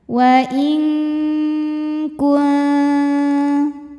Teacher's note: Maka bunyi nunnya samar-samar, siap-siap menuju makhraj huruf kaf disertai dengung. Nah, karena kaf ini makhrajnya jauh dari nun, maka bunyi dengungnya besar. Suara masuk hidung banyak. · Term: ikhfa ab'ad